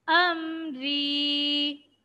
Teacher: را کے نیچے زیر ہے، را کو باریک پڑھیں گے۔